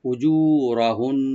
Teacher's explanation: উজুরাহুন্না, উ হামজাটাকে right দিবেন, জু একালিফ টানবেন, রটাকে ডিপ করে, আর নুন মুসাদ্দাদ যেটা লাস্টে এটা একালি পরিমাণ গুন্না করব, কিন্তু টান হবে না